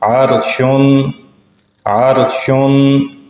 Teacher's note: را ساکن ہو اور اس سے پہلے حرف پر زبر آ جائے تو وہ را بھی پر پڑھی جائے گی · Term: را کی تفخیم